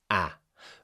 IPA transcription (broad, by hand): æ